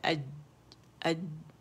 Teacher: तो जीम में क्या है कि उसमें आवाज़ सख्ती से रुक जाती है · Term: शिद्दत